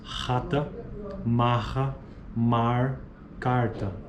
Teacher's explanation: Pronúncia típica do dialeto carioca, ocorre fricção audível na região velar, ocorre em início de sílaba que seja precedida em silêncio, por silêncio e portanto encontra-se em início de palavra. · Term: fricativa velar desvozeada